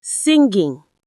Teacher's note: singing actually has the ng sound in it twice. Once in sing and a second time in ing.